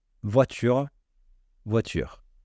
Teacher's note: langage courant les Français vont plutôt le faire tomber c'est-à-dire l'enlever on va dire voiture sans prononcer le E